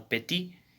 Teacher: le T final n'est pas prononcé